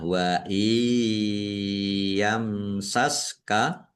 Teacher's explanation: mim sukun bertemu dengan huruf sin, bacaan idhar safawi, dibaca jelas. Allahnya dibaca tebal karena harokat di depannya fathah.